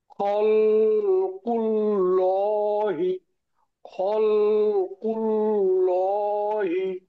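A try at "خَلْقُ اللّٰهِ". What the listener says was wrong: আপনি যে পড়ছেন খল, খল, এটা একটু টানবেন না, খল খল তাড়াতাড়ি পড়েন। খল কুল ল, এইটাই শুধুমাত্র টান হবে, খারাপ যাবে, কোনোটাই টান হবে না, পড়েন। খল কুল হি।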